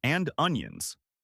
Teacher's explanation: The D in and is super soft, almost silent, and the N links right into onions. It sounds more like an onions. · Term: linking